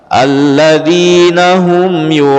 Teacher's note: mad wajib muttasil, jadi panjang 5 sampai 6 harokat